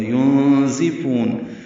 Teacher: ينزفون نون ساکن کے بعد زا آنے کی وجہ سے اخفا ہوا ہے ، زا کے نیچے زیر ہے، ينزفون زا کو تیز صفیر